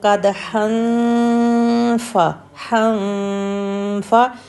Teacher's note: ہن کی نون کو ہم نے نوز میں چھپانا ہے اور نیکسٹ لیٹر فا کے لیے ریڈی ہونا ہے